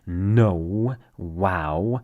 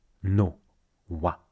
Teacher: In English, you make waves with your vowels. No, wow. In French, we cut it short.